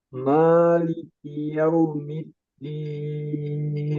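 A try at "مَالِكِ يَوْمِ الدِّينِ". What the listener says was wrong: Nah, sedikit sedikit lagi ditahan. Maliki yaumiddin. Ya, yaunya yang ditahan. Yaumiddin.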